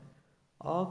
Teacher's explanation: आ का उच्चारण कंठ की सहायता से होता है,